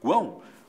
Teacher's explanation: Na segunda sílaba, guão, o A, esse A nasal, né? Esse A é a vogal. Nós temos ao lado dessa vogal uma semivogal e outra semivogal, portanto temos um tritongo.